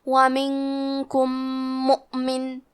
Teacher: آخر میں میم ساکن ہے، پھر حرف المیم ہے کلمت مؤمن، یہاں حکم ہے ادغام متماثلین صغیر، مطلب ہم پہلے میم کو دوسرے میم میں ملا کے ایک ہی میم غنہ اور تشدید کے ساتھ پڑھیں گے